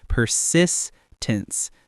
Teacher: Persistence, stress on the second syllable.